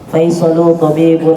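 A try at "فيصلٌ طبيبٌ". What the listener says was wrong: tanwin. Faisalun tanwin.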